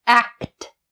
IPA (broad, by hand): ækt